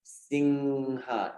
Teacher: It's not N. It should not turn into N. It should stay up as a nasal sound. Singha, not Sinha. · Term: anusvara